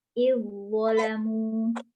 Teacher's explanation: Zal sukun diidghamkan ke dalam wo dengan sempurna atau idgham kamil, yakni menjadi huruf kedua yang ditasydid.